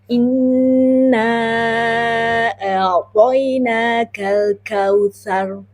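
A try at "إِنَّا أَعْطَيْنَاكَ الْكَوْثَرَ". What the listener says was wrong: Nah, bukan sar. Tebal. Iya.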